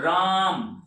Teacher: यहां देखिए राम, तो रा अलग है, मो अलग है। राम, तो राम पर देखिए ऊंची आवाज आती है ना राम बोलने में, रा पर राम, और मो जो है एकदम स्लो हो जाता है। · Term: वर्ण बलाघात